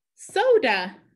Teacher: So put a macron. And the A is at the end of the word. So it's going to make that schwa sound